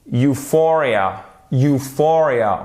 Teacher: Euphoria, on va bien plus de l'avant pour le U, même si c'est pas lui qui est accentué. L'accentuation, elle se fait sur notre deuxième syllabe.